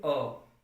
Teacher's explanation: जब हम अ बोलते हैं तो जीभ को हम अंदर की तरफ खींचते हैं, थोड़ा सा नीचे लेते हुए अंदर की तरफ जब खींचते हैं तो ये यहाँ का हमारा ये जो भाग है मुड़ता है। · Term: मध्य स्वर